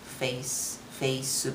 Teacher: the s and c at the end are supposed to be consonant by themselves but we can't do it. So we added ooh sound. So it sounds face face right.